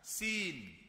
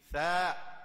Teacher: Sa lain, sin makhraj tempat lain. Sin makhraj dia di dalam langit, atas pada gusi atas. Sin. Sa sentuhan gusi depan dekat gigi.